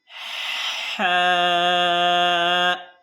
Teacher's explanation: हा को हम गले के दरमियान वाले हिस्से से पढ़ते हैं अब गले के दरमियान वाला हिस्सा कैसे पता चलेगा तो आप